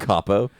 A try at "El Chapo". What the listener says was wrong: Did you say El Capo? pronounce the H. You pronounce the H